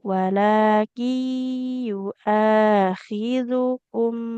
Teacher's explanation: huruf ya-nya nggak boleh panjang karena dhammah tidak bertemu waw. Walaki yu'akhidukum.